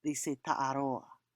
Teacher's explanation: in Tahiti, they drop the NG sound